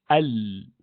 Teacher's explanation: Lam of Arabic has slightly wider portion of the tongue touching the top